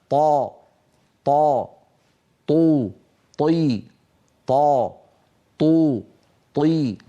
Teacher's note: اللهجه العاميه ما قلته عن القاف ينطبق على حرف الطاء ايضا فالطاء الفصيحه طاء مجهوره شديده